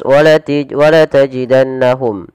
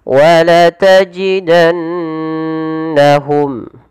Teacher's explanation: Padahal di sini harus dibaca dengan bacaan yang kita namakan dengan gunnah, yaitu sembari menahan memasukkannya ke rongga hidung.